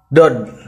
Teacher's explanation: Dod keluar huruf dari pangkal tepi lidah